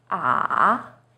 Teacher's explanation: Third tone, 三声, is even lower. It first dips down, then rises.